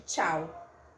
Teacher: um modo de articulação africado, que é a mistura de uma oclusiva, de uma consoante oclusiva com uma consoante fricativa